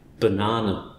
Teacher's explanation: There's two schwas in that one: the beginning and the end but not the middle.